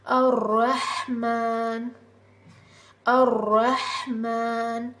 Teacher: ہا کی آواز کو جو ہے کلیئر پڑھنے کی کوشش کیجیے، ہا جو حلق سے نکلتا ہے، حلق سے نکالنے کی کوشش کیجیے۔